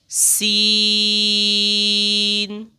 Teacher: सीन की अदायगी में सीटी निकलती है।